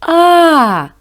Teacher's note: вільно проходить повітря так вільно цей звук голосний